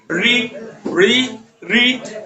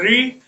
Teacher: जीभ पीछे की तरफ घूम के जा रही है, यानी कि यहाँ एक चीज होता है जिसको बोलते हैं मूर्धा, क्या बोलते हैं, मूर्धा।